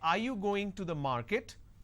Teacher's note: when I say are you going to the market there is a rising tone